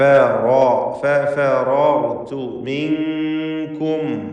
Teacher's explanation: സാക്കിനത്തെ നൂനിനെ ഇഖ്ഫാ ഹഖീഖി നൽകി മറച്ച് മണിക്കണം